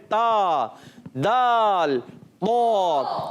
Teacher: زبان کا سرا اور اوپر کے دونوں دانتوں کے جڑ سے. زبان کا سرا اور اوپر کی دانتوں کی جڑوں سے ادا ہوتا ہے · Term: حروف نطعیہ